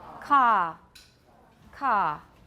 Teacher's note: The vowel does not become a diphthong, there is no schwa. It is simply ka. It's a very long ah sound.